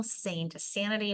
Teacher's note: Sane to sanity, we go from long to short.